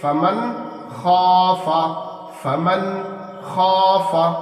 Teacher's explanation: خا کو بالکل ہم اسپشٹ کر کے ظاہر کر کے پڑھ رہے ہیں بلا غنہ کے، اسی کا نام اظہار ہے۔